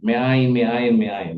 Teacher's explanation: Karena dibaca bukan mi ain tapi me ain karena dia ketemu gutural.